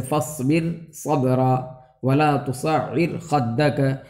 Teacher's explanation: را ساکن کے بعد دوسرے کلمے میں حرف مستعلیہ آ رہا ہے تو یہاں پر را کو باریک پڑھیں گے